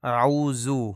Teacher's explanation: ذا کو زے پڑھا جاتا ہے